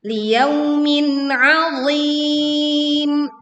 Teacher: Jelaskan bunyi tanwin, kasrohnya tidak melebur ke huruf ain. Dan huruf ain pun dibaca dengan jelas.